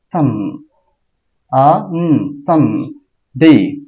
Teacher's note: এই সানকে একসাথে বলে ফেলতে হবে এবং এস এর এখানে বা প্রথম দিকে চাপ দিতে হবে